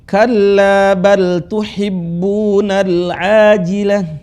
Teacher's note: Ta yang marbutah menjadi hak sukun. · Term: ta marbutah